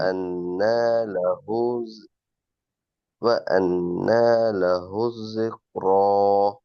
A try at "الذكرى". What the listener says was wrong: ذكرى பெரிய காஃப் அல்ல, சின்ன கேப். ذكرى. சின்ன கேப், சின்ன கேப். ذكرى.